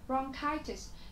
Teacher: trọng âm của chúng ta sẽ là rơi âm tiết thứ hai